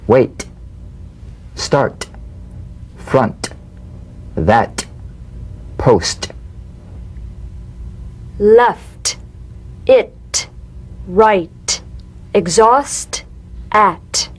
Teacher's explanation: The unvoiced T, tongue front palatal stop consonant, cognate to the D. The same staccato springing action as the D drum beat, with no voice, forms the light tap of the T.